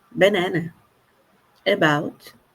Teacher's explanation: É um som intermediário que não é um a aberto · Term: chuá